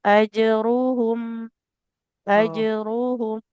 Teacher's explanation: Biarkan bibirnya tetap rapat dulu. Galirkan dulu huruf mimnya. Kelamaan enggak boleh, kecepatan juga enggak boleh. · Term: mim sukonnya